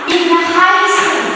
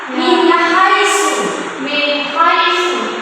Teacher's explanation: cara membaca izharnya itu jelas tanpa ada gungan